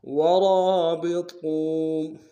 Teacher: را کو موٹا ادا کرتے ہوئے واو کے ساتھ ملانا ہے ، واو مدہ ایک اعتدال میں کھینچیں گے، ورابطوا یا ایہا